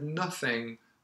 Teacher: there when i said nothing the th sound was more like a f sound which is very common in cockney english